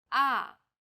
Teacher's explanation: pitch then Rises to the middle of the pitch range ah the fourth tone Falls sharply and quickly from a high pitch